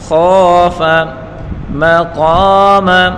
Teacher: قاف الف زبر قا الف مدہ ہے اس کو ایک الف کی مقدار کھینچ کر پڑھیں گے اور قاف پر حروف ہے اس کو پر کر کے پڑھیں گے اور میم کے اوپر پڑھی حرکتیں بغیر کھینچے پڑھیں گے.